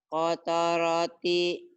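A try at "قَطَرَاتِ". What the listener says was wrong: Kotoroti, bukan kotoroti, Bu. Kotaroti, nggak ada yang panjang, Bu. Kotaroti. Kotaroti.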